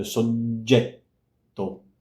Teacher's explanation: if you have a G, which is followed by a front vowel, you get a J. And in this case, it's a long J.